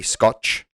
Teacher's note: in brazil when they see a word and with the letter t they give it a ch sound